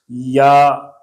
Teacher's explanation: اس یا میں بھی زبان کا درمیان، جس کو وسط لسان کہتے ہیں، شجر کہتے ہیں، یہ اوپر کے تالو سے لگے گا